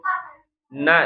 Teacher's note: Nun itu ujung lidah ketemu dengan gusi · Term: huruf nun